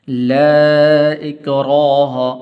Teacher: لا اکراہ، یہ لا اس کے اوپر چھوٹی مد ہے تو اس کو ایک الف برابر لمبا کرتے ہیں۔ لا اکراہ، را کے اوپر زبر ہے تو اس لیے آپ نے اس کو پر کر کے پڑھنا ہے